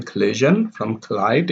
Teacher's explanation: in which the d sound is deleted in collision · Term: deletion